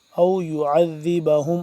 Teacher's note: عین کو حلق کے درمیانی حصے سے کھچاؤ پیدا کر کے